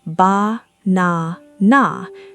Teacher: 3 equal beats, same strength, same length